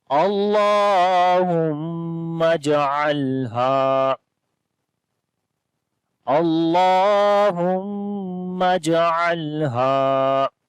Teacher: اللہ کے نام کو موٹا پڑھیں گے، اس سے پہلے زبر آ گئی ہے اور لمبا بھی کریں گے، کھڑی زبر ہے اس کے اوپر۔